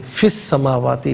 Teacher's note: फा के नीचे ज़ेर है, से अस्समावाति के सीन के साथ मिलाएंगे, वाव पर ज़बर है, से अल अर्दी के लाम साकिन के साथ मिलाएंगे। दोनों मकामात में से दरमियान में से अलिफ यानी हमज़ा को हज़फ किया जाएगा